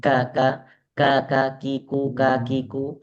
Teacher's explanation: Jadi seperti kita baca K biasa aja itu sebenarnya sudah ada hamasnya.